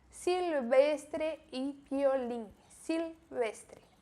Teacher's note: O L tem som de L e o V tem som de B fraco.